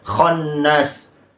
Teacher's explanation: Setelah itu di satu kata ini al-khannas ini kesalahannya ada 2 huruf kha, kemudian nun tasydid lagi. Al-khannas harusnya 3 harokat ditahan terlebih dahulu. · huruf kha itu makharijul hurufnya berada di adnal halq, di atas tenggorokan yang bagian atas, makanya ada ngoroknya.